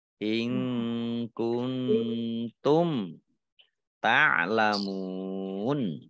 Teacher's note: Mim sukun bertemu dengan huruf ta, bacaan izhar. Dibaca jelas.